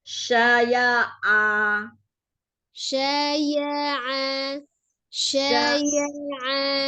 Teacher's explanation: ainnya dari tenggorokan bagian tengah, tidak ke hidung.